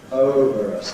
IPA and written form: ˈəʊvər əs (over us)